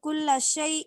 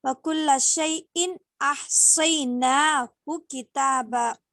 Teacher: تنوین کے بعد اظہار میں سے جو ہے حمزہ آیا، وہاں پہ ہم کیا کریں گے، ظاہر کر کے پڑھیں گے